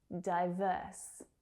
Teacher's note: So that second syllable is the stressed one.